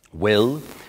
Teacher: it's got a slightly darker quality to the L